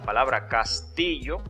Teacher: en la palabra castillo, la sílaba tónica es ti